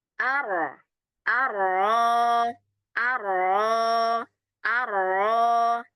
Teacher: Dan secara istilah adalah getaran ringan pada ujung lidah. Ketika mengucapkan huruf ro disebabkan makhraj yang sempit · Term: Takrir